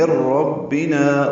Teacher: نون ساکن کے بعد را آنے کی وجہ سے ادغام کامل ہوا ہے. میم را سے ملا دیں گے.